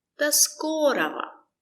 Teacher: The stress is on sko.